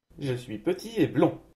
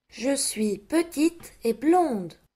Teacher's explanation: on ne prononce jamais les lettres T et D en position finale d'un adjectif masculin, alors qu'on les prononce si elles sont suivies d'un E au féminin